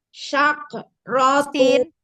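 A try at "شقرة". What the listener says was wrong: Sin. Sakrotu. Enggak sya, sa biasa. Sakrotu. Enggak ke, jangan sake. Sakrotu. Iya, alirin nafasnya ketika sukun. Sakrotu.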